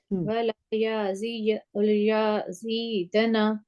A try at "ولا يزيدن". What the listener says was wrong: نہیں آپ نا یا کو تھوڑا لمبا کر رہی ہیں اس کو لمبا نہیں کر ولا یزیدن